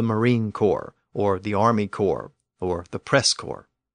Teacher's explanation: But both the P and the S remained silent, and they remain silent to this day, just as in standard French.